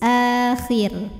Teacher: Kalau berhenti di sini, ro-nya jadi sukun dan dibaca secara tarqiq. Sebab sebelum ro sukunnya ada huruf berbaris kasrah.